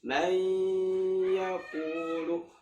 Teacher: gunnah tapi tidak sekuat nun dan mim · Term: idgham bi gunnah